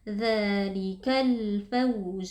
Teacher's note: dua harakat dzalikal di sini ada alif lam alqamariyah karena ada alif lam bertemu dengan huruf Fa yang merupakan huruf qamariah alif lamnya dibaca dengan sukun atau dengan izhar · Dzalikal fawzu, faw ini merupakan bacaan li karena ada waw sukun yang sebelumnya berharakat fathah, waw sukunnya dibaca dengan lunak